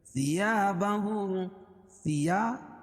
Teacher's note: الف سے پہلے زبر ہو تو الف مدہ اس کو ایک الف کے برابر کھینچ کے پڑھیں گے